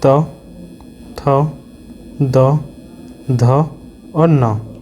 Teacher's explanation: दंते हमारा होता है त, थ, द, ध और न। इसमें हमारा ता भी आ रहा है, ना भी आ रहा है और दा भी आ रहा है।